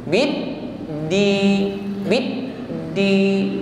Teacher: Kalau Dal bid di dia putus ya tertahan aliran suara ini yang disebut syiddah